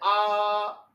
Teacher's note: अर्धसंवृत्त यानी आधा बंद, ए, ओ, विवृत्त, विवृत्त मीन्स यानी पूरा मुंह खुला हुआ, विवृत्त। बड़ा आ, जब हम बोलते हैं आ तो ये पूरा का पूरा मुंह खुला रहता है